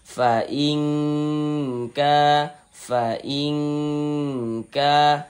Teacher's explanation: Di bagian ingnya itu kita tahan kita panjangkan sejenak. Kira-kira sepanjang dua harakat. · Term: dengungkan